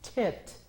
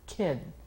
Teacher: al decir kit, las cuerdas vocales no vibran. Al decir kid, aquí vibra.